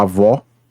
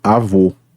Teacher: o acento agudo, que tem relação com o timbre aberto